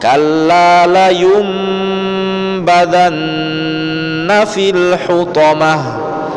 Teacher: Badanna itu dengung karena nun bertasydid.